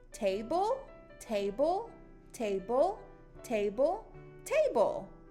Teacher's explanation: turn our voice on, and make it pop for B. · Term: bubble sound